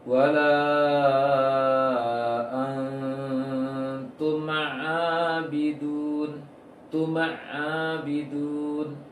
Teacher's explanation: kurang memberikan hak pada mim sukun, atau terlalu cepat menutup bibir lalu langsung pindah ke ain. Berikan hak mim, hadirkan suara sedikit, karena mim mempunyai sifat bawaan dengung, walaupun tidak dikatakan dengung, tapi bawaan dengung.